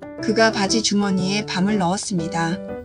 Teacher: 단어 중간의 비읍은 서양어의 비처럼 약하게 올려도 괜찮습니다.